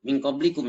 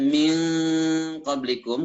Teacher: Nun sukun atau tanwin bertemu dengan qaf dan bertemu dengan kaf. Di situ tidak ada dengung. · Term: ikhfa ab'ad